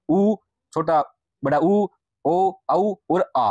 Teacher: जिन स्वरों के उच्चारण में जिह्वा का पिछला भाग सक्रिय रहता है उन्हें पश्च स्वर कहते हैं,